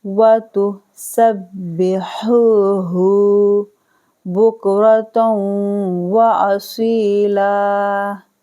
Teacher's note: اور یہاں پر ہا اور یہ ہا دونوں میں فرق کرنا ہے. ہا کو حلق درمیانی حصے سے نکالیں گے، ہا کو پڑھیں گے بھاری بنے ہا.